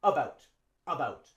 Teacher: instead of the a sound we use schah